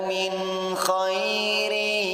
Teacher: Min hukum bacaan izharu halqi karena ada nun sukun yang bertemu dengan huruf kha. Cara membacanya terang dan tidak boleh mendengung.